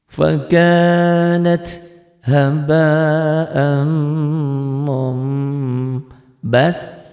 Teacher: Jadi bunyi nun mati ini menjadi mim.